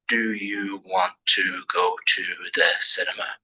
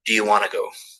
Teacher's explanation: Want to go sounds like one word, want to go, cuz you're connecting all the speech up. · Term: connected speech